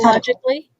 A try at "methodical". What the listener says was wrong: No, no, it says method.